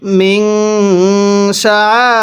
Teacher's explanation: এই আল্লাহ শব্দের এই লামটাকে চিকন করে পড়তে হবে, কারণ আল্লাহ শব্দের লামের পূর্বের হরফের নিচে যদি এরকম জের দেখেন তাহলে এই আল্লাহ শব্দটাকে আল্লাহ এরকম চিকন করে পড়বেন।